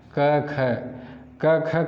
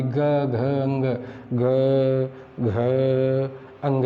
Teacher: पहला और दूसरे में कोई झंकार नहीं है। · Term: अघोष